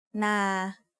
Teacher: A mid-tone is pronounced at a flat pitch in the middle of your regular vocal range. Na is an example of a mid-tone syllable.